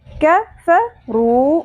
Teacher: رو، رو، رو، ٹھیک ہے؟ کف رو، اور کاف کو باریک پڑھنا ہے، قوف نہیں پڑھنا، ٹھیک ہے؟ اکثر ہم جب نیا سیکھنا شروع کرتے ہیں تو قوف کی ادائیگی کو بہتر بنانے کے لیے کاف کو بھی ہم پر کر دیتے ہیں، ایسے نہیں کرنا۔